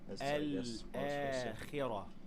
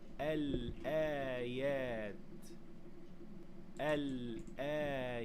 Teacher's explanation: You pronounce lam, then hamza, then an alif with a natural mad of two counts.